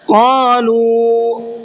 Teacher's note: قالوا، شروع میں بڑا قاف ہے، اس کو مبہر کے پڑھنا ہے، اور لو اس کو کھینچ کر کے پڑھنا ہے، اس لیے کہ یہاں واو ساکن سے پہلے پیش ہے۔ جہاں پر واو ساکن سے پہلے پیش ہوتا ہے تو وہاں واو کو کھینچ کر کے پڑھتے ہیں۔